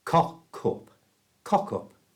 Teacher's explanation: First, let's get the pronunciation right. We moved the k sound from the end of cock to the front of the sound from up.